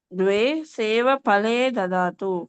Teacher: Don't pronounce this as fa. This is pa. Mahaprana pa.